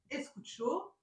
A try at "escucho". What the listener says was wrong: Très bien.